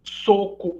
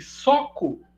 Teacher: distinção entre a vogal média alta e vogal média baixa